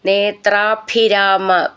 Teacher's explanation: ഭി എന്നുള്ള അക്ഷരം നന്നായിട്ട് ഊന്നി പറയണം